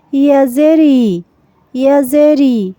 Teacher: হামজার উচ্চারণটা হলো কণ্ঠনালী বা হলকে শুরু থেকে শক্তভাবে, যেমন হামজা জের ই। আর ইয়া হলো নরমভাবে জিহ্বার মাঝখান থেকে